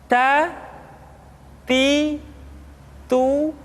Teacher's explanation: huruf t ketika diucapkan terdengar ada nafas yang mengalir · keluar dengan menyentuhkan ujung lidah kita dengan gusi gusi gigi seri bagian atas